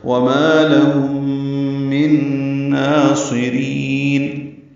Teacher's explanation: لہم من ناصرین میں میم کو نون سے ملا دیں گے، یہ بھی ادغام ہے، غنہ ہوگا ، آواز ناک کے بعد سے ملے، یہاں بھی لے جائیں · رین میں را کو لمبا کریں گے، نون ساکن پہ اظہار ہوگا